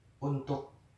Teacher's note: Selanjutnya ada bunyi vokal U. Bunyi vokal U adalah vokal belakang bundar.